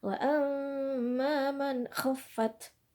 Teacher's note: nun mati dengan ko juga harus dibaca dengan jelas nunnya ya